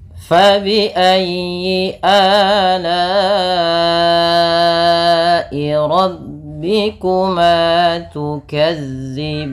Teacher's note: Usahakan di dalam melafalkan huruf fa ini harus ada aliran nafas, karena fa memiliki sifat yang namanya sifat hamas.